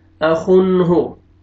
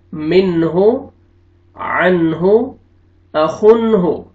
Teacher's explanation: نون ساکن کے بعد حروف حلقے میں سے ہا آ رہا ہے، یہاں پہ آپ نے اظہار کرنا ہے، جلدی پڑھیں گے۔